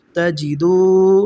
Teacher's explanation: پیش کے بعد جزم والی واو آ گئی تو ہم دال کو کیا کریں گے، لمبا پڑھیں گے۔